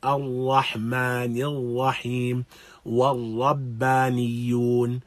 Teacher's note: We shouldn't have this vibration at the tip of the tongue.